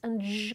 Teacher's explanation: You sometimes see [ʃ] or [ʒ] called alveo-palatal or palato-alveolar sounds because the place of articulation is between the alveolar ridge and the palate